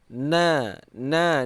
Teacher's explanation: Na nun ini keluar di ujung lidah peringkat kedua.